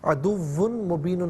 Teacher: تنوین کو میم کے ساتھ ملا کر میم کی آواز کو غننے کے ساتھ ادا کریں گے